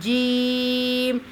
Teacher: جیم کا جو مخرج ہوتا ہے وہ زبان کے درمیان کو تالو کی طرف بلند کرتے ہوئے مضبوطی کے ساتھ ادا ہوتا ہے